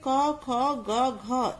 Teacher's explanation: इन सभी का उच्चारण जो है कंठ के स्पर्श से होता है।